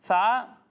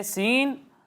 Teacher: ثا میں سیٹی کی آواز نہیں آئے گی، سین اور صاد دونوں میں سیٹی کی آواز آئے گی